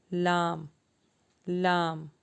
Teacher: سب سے پہلے ہم پڑھیں گے لام۔ لام کا مخرج ہے زبان کی کروٹ کے آخر سے زبان کی نوک تک کا حصہ جب اوپر کے 4 دانتوں کے مسوڑوں سے لگے